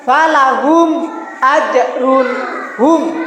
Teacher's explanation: Idhar syafawi adalah apabila ada mim mati bertemu dengan salah satu huruf hijaiyah selain huruf mim dan ba. Cara membacanya, bunyi mim disuarakan dengan jelas tanpa berdengung.